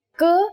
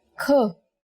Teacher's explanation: k is a consonant, and when we say it with aspiration, it becomes another consonant kh